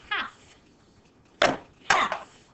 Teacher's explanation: we don't hear that L at all when we say half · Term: silent L